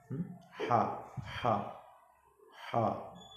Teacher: ہا کی آواز درمیانی والے حلق سے ہلکی اور نرم ہوتی ہے